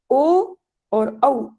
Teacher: ओ और औ इनका स्थान कंठ और ओष्ठ है। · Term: कंठोष्ठौ